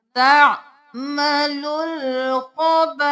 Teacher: 5 अलिफ के बराबर खींचना है, अलिफ को नहीं पढ़ना